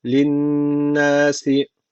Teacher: şeddeli nun var yine mutlaka bir elif miktarı tutuyoruz